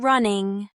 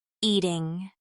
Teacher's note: the ing ending, as in running or eating, is made by raising the back of your tongue towards the soft part of the roof of your mouth. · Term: ing sound